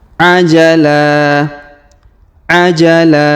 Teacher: huruf la kita panjangkan dua harakat